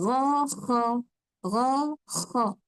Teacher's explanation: yang a hujung ha dekat atas sekali hujung kerongkong iaitu huruf ghin dan huruf kha